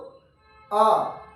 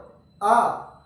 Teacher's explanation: क्योंकि विवृत मुखी है पूरा मुख खुल जाता है जैसे ही आ का उच्चारण करते हैं तो सिर्फ और सिर्फ आ जो है वो विवृत मुखी है।